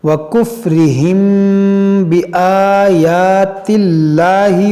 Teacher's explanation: میم ساکن کے بعد با ہے تو یہاں پر اخفاء شفوی ہوگا، یعنی یہاں پر بھی غنہ کریں گے